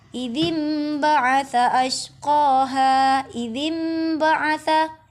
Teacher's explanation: Di dalam bacaan ini, bacaan nun mati atau tanwin tidak lagi dibaca sebagai nun atau tanwin, berubah menjadi bunyi huruf mim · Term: iqlab